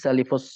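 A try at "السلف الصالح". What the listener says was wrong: Salah. Salaf ya, bukan salif. Salafa. Salafu. salafus salihu.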